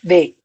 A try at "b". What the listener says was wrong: Wrong. You're giving me the alphabet and not the sound. You're giving me the alphabet, not the sound. But you're still giving me the alphabet and not the sound.